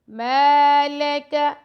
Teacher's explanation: میم کے ساتھ الف ہے تو میم کو ہم 2 سیکنڈ کا ٹائم دیں گے لیکن لام اور قاف کو لمبا نہیں کریں گے